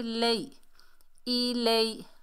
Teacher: لام کے اوپر زبر، آگے یا ساکن، یہ یا لین ہے، اسے نرمی سے جلدی سے ادا کریں گے